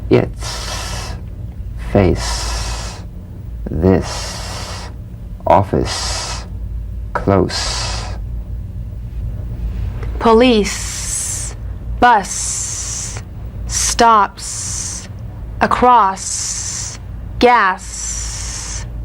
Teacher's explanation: s cognate to the Z unvoiced s sound fricative tongue to gum Ridge